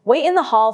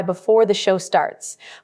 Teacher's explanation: crisp T sound at the end of wait and starts